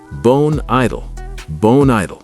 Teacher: notice how I linked the final consonant sound in bone to the vowel sound at the beginning of idle